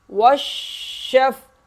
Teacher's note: شین کو سختی سے ادا کریں گے، اور فا جو ہے شین کے ساتھ مل جائے گا۔ واو شین زبر وش، شین فا زبر شف، والشف، عین زیر عی، والشفعی، والشفعی، وقف والشفع، آخر میں عین کی آواز نکلے گی اور قلقلہ نہیں ہوگا۔